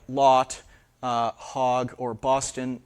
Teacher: So not a laxing, a rounding of the vowel in words like lot, hog, or Boston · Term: rounded lot